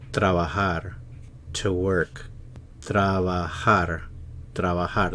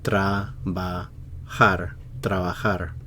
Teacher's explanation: The stress is on the last syllable here.